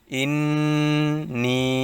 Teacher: নুনের উপর তাসদিদ আসছে এজন্য এটা ওয়াজিব গুন্না করতে হবে